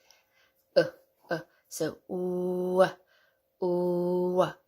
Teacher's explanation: start with the lips forward, as in boot, ooh, and then immediately pull the lips back to the neutral schwa position